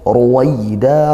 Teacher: ra-nya dhammah dibaca tafkhim, ditebalkan. Waida dibaca lin ya, dilembutkan, fathah diikuti sukunnya.